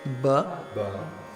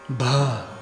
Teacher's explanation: Say ba with your hand, but don't aspirate it so that you don't feel any air. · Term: aspiration